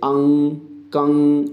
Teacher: मुख और नासिका दोनों से उच्चारित होने वाले वर्ण अनुनासिक कहे जाते हैं।